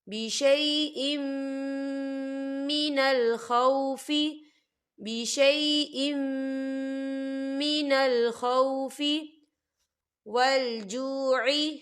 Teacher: وَلَنَبْلُوَنَّكُمْ بِشَيْءٍ، یہاں دیکھیں بِشَيْءٍ، حمزہ کے نیچے تنوین ہے اور تنوین کے بعد میم آ رہا ہے، اور میم جو ہے حروف یرملون میں سے ہے، تو یہاں پر ادغام ہوگا غنے کے ساتھ۔